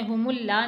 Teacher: میم کو لام سے جب آپ ملائیں گے تو لام کو موٹا پڑھنا ہے